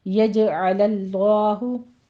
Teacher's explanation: यज में जीम पर कलकला करेंगे और लफ्ज़ जलाला को आगे आपने बोल पढ़ना है।